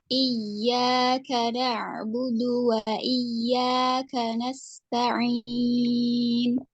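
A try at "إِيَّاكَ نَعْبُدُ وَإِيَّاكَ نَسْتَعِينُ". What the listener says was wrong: Sudut bibirnya tidak boleh ditarik. Saat fathah, bibirnya diam.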